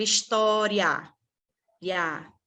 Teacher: É o I mais o A. O I fazendo a semivogal, o A fazendo a vogal.